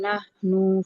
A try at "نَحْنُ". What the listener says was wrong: नहनु में नून भी नहीं लंबा होगा ठीक है नहनु